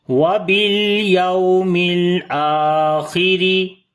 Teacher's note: یومل، واو یہاں پر لین ہے، نرم پڑھیں گے، یہاں پر لام کے اوپر پھر صفت توسط آ جائے گی، حمزہ کو لمبا کریں گے، کھڑی زبر ہے اس کے اوپر، خا کو موٹا پڑھیں گے لیکن موٹائی اس کی کم ہوگی کیونکہ اس کے نیچے زیر ہے، را کو باریک پڑھیں گے، را کے نیچے بھی زیر ہے۔